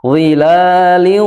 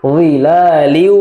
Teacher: Jadi ada gunnahnya, ditahan 2 harokat. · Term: idgham bi gunnah